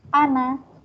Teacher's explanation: Kalimat ana, semua tulisan ana hanya dibaca pendek. Jika terpaksa waqaf, tetap dibaca panjang satu alif.